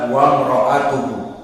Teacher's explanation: hamzah di sini hamzah yang kedudukannya tertulis tetapi tidak dibaca karena didahului dengan huruf sebelumnya yakni waw. Maka hamzatul wasl jika didahului oleh sesuatu sebelumnya tidak dibaca, maka dibaca wa imra'atuhu, tertulis tetapi tidak dibaca.